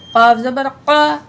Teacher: ये दो नुक्तों वाला क़ाफ हमेशा मोटा पढ़ा जाएगा